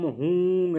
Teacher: दूसरे मंत्र में हा कंठ स्थानीय है और ऊकार ओष्ठ स्थानीय, इसलिए उसको कंठोष्ठ नाम दिया गया है।